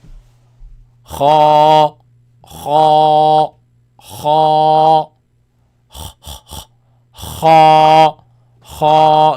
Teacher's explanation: Dry part of the throat. Ends with alif. Make it long, but it's heavy sound, not light. · You're going to pronounce it heavy. It comes from the top part of the throat. You see, the throat has 3 parts. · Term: first heavy letter